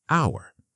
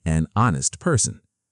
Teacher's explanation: but we don't pronounce the h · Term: silent h